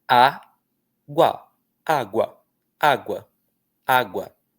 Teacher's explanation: Parece que você faz dois esforços com a sua boca, ok? E um desses esforços tem uma semivogal, que é o U, e uma outra vogal, que é o a.